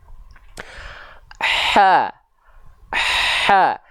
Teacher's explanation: dia mengalir nafas bersamaan dengan mengalir suara. Jadi bukan mengalir suara dulu baru mengalir nafas, atau sebaliknya, mengalir nafas dulu baru mengalir suara, enggak. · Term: h kecil